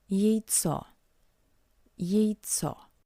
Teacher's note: In an unstressed position, the letter Ya is read as something between I and Ye.